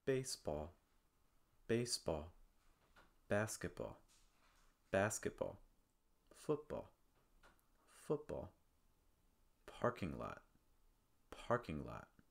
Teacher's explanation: when you're pronouncing these you want to place the stress on the first word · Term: compound nouns